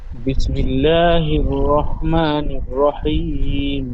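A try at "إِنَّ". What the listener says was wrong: ইন না, নুন টান হয়ে যাচ্ছে, নুনের উপর যাবার আছে। ইন নুন গুন্না হবে, হামজা নুন সের ইন, হামজাটি নুনের সাথে যুক্ত হয়ে একালি গুন্না হবে, নুন তাইদি ওয়াজিব গুন্না। ইন্না রাব্বাহুম বিহিম, বল।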